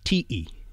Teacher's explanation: in Tahitian, that word is ti'i with a glottal stop